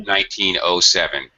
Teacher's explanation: native speakers tend to pronounce the zero as O.